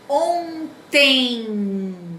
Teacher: Quando eu pronuncio, o som sai pelo nariz, ó. Ontem. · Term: ditongo nasal